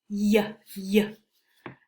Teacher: The middle of our tongue, not the tip, not the back, but kind of like the middle. It raises to the roof of the mouth, but it doesn't touch it.